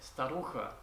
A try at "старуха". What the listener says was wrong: Ты так агрессивно произнес слово «старуха».